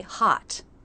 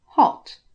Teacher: There's more lip rounding and less jaw drop.